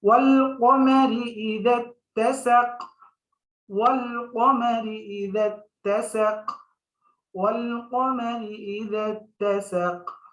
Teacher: আর ওয়াকফ করলে সাকিন হবে, তখন আমরা কলকলা করব।